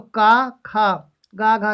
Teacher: मतलब ये तो सारे कंठ ध्वनि भी हैं, स्पर्श व्यंजन भी है